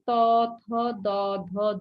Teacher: হলো মূর্ধন্য ধ্বনি তারপরে আমরা পেয়েছি ত থ দ ধ দন্তন্য আমাদের জিহ্বা গিয়ে দাঁতকে স্পর্শ করছে এজন্য এই পাঁচটির নাম হলো দন্ত ধ্বনি